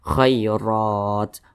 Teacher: ro dibaca tabkhim, dibaca tebal karena dia berbaris fathah atau berbaris ke atas.